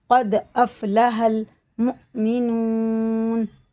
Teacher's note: قد افلح دال میں قلقلہ ہے اور یہ حمزہ میں جھٹکا ہوتا ہے، واو ساکن سے پہلے پیش ہے، الٹے پیش کی طرح کھینچ کے پڑھیں گے